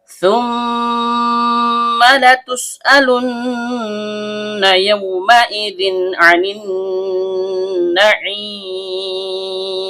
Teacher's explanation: tsa ujung lidah bertemu dengan ujung gigi seri atas. Mim huruf bibir. · Karena mimnya bertasydid maka terjadi hukum bacaan ghunah asli. Dibaca dengung dan setiap dengung keluar dari hidung.